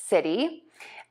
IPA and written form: sɪti (City)